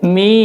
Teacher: Ketika sudah di akhir 6 harokat, baru suara M-nya muncul.